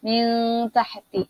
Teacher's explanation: Kemudian min tahti, nun berjumpa dengan ta, maka hukumnya dibaca dengung kerana dia ikhfa hakiki.